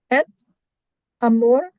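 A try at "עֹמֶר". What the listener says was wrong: Accent on the first syllable. Omer.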